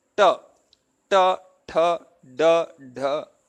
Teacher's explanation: all of them are retroflex sounds like the tip of the tongue is turned upwards and words and touches the palate at a point which is